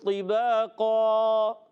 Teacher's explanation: 2 زبر کی تنوین کو ہم وقف میں الف سے بدلتے ہیں اور اس کا الف موٹا ہو جائے گا، الف بھی موٹا ہو جائے گا، یہ بھی آپ نے یاد رکھنا، ٹھیک ہے۔